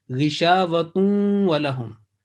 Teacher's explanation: it will be joined with nasal sound, and you have to hold your nasal sound for 2 seconds because you are joining with waw